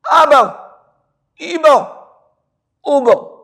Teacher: با دونوں ہونٹوں کے تر حصے اندر والے حصے سے با ادا ہوتا ہے